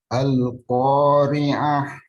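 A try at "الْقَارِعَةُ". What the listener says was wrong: Iya, hanya pakai H besar, Om. Al-Qari'ah. Baik, hanya H akhirnya ya. Itu pakai H yang besar. Seperti kita bilang hotel. Al-Qari'ah. Kalau tadi kan pakai H tipis tuh. Al-Qari'ah. Nah, ini H kecil. Kita pakai H besar. Al-Qari'ah.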